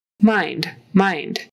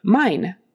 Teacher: make sure you get that D on the end it's not a strong D